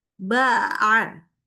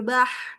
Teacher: Nggak boleh ya. Nah, jadi dibaca huruf ain itu nggak boleh ada terhembus udara.